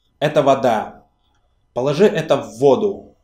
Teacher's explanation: the stress here moved from the last syllable to the first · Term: Mobility